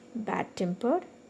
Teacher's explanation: bad temper this is also a compound adjective so that's why the second part of the word is stressed